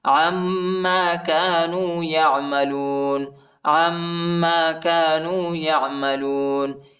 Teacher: عین کو میم کے ساتھ ملائیں گے اور غنہ کریں گے